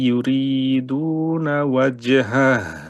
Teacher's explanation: কারণ হায়ের মধ্যে ওই যে হামস এবং রখাওয়া দুটোই আছে, আওয়াজও থাকতে হবে, বাতাসও বের হইতে হবে। আর নয় ওই যে আর কি শেষে আবার হা, তো বাতাসটা একটু বেশি, হামসটা বেশি হবে।